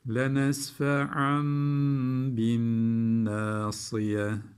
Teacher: lenesfe iki üstünden sonra B geldi. İklap yaptık.